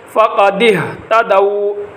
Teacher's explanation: آمنتم بہ فقد اہتدوا، قاف موٹا، فقد اہتدوا، ہا کو گلے کے سب سے نچلے حصے جو سینے کے ساتھ لگا ہوا ہے وہاں سے زور لگا کر ہا کو ادا